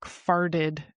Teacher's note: When you're saying it in the present tense, it's fart with the T. But then when you're saying it in the past, it's like farted in US English because we kind of use the flap T there.